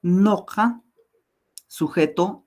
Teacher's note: Pero yo estoy haciendo un esfuerzo fuerte para pronunciar la U libre. Y entonces la presencia de la consonante K hace que esta U tienda a pronunciarse como una O. Sin embargo, no es una O libre y por lo tanto no es, por eso es que no existe la vocal O en quechua.